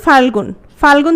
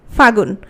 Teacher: তাহলে ফাল্গুন থেকে যখন ফাগুন হচ্ছে, কোন জিনিসটা লোপ পাচ্ছে? লটা লোপ পাচ্ছে। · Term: অন্তর্হতি